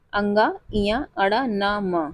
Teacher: हर वर्ग का पंचम अक्षर यानी कि अङ ञ अण न म नासाग्र मार्ग से निकलने वाली ध्वनियां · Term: नासिक्य व्यंजन